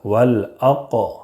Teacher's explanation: قاف میں قلقلہ ہوگا اس لیے کہ حروف قلقلہ کے 5 حروف میں سے قاف ہے، قطب جدن کے 5 حروف میں سے قاف ہے، اس لیے قلقلہ کریں گے۔